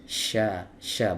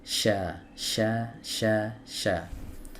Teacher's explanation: Ya, kemudian huruf shin ini ada satu sifat yang menjadi kekhususan huruf shin yang tidak dimiliki oleh huruf-huruf yang lainnya, yaitu sifat tafashi, di mana desis yang ada di huruf shin ini menyebar